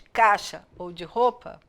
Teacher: uma semivogal que é quando eu pronunciei muito fraquinho que parece que eles nem existem